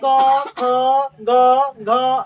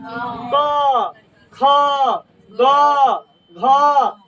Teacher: इसमें जीभ और दांत और तालू का कोई योगदान नहीं होता है सिर्फ कंठ से आवाज